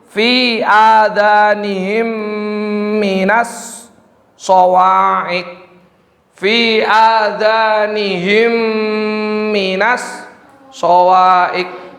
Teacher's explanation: Selanjutnya atau yang terakhir yaitu idgham mutamasyilain atau disebut dengan idgham mimi, yaitu idgham memasukkan, mutamasyilain yaitu dua huruf yang serupa, memasukkan atau meleburkan suara mim sukun ke huruf mim berharokat yang terletak setelahnya sehingga kedua mim tersebut menjadi satu dan bertasdid